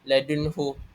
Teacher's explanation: nun sakinah atau tanwin a hendaklah dibaca jelas tanpa dengung. Dan contoh yang terdapat dalam surah al-Kahfi ayat satu dan dua ini ialah ladunhu nun sakinah bertemu dengan huruf iz halki iaitu ha. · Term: izhar halqi